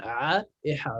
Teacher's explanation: C'est vraiment tout au fond, tout au fond. Au milieu de la gorge, c'est là où ça commence à frotter. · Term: le milieu de la gorge